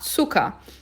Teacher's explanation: Tsu. E o ER no final tem som de A. Zucker.